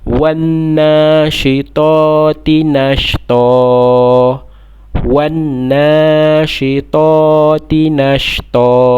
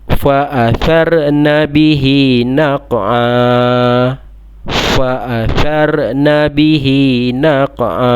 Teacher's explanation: Yang nombor 7 tu waqaf, berhenti juga, tapi untuk mad iwad. Okey, mad iwad ni bacaan tanwin tetapi kita baca satu.